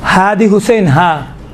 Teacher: ہا یہ حروف انتہاء حلق سے نکلتا ہے، یہ ہا چھوٹا ہا، حروف حلقی دونوں حروف حلقی میں سے ہیں۔